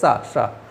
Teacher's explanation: सा को बोलते हैं तो जीभ आपकी तालू से टच होती है। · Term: उच्चारण स्थान